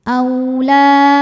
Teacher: Madnya alif hamzahnya A pada kata annisā. Maka sānya dipanjangkan boleh empat boleh lima harakat. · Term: mad wajib muttasil